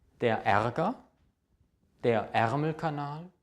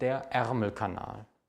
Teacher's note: ist es ein Ä, also ein geschlossenes E